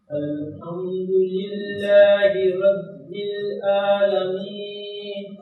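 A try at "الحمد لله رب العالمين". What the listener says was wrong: ये आइन को वाज़ेह करें। अल्हम्दुलिल्लाहि रब्बिल आलमीन।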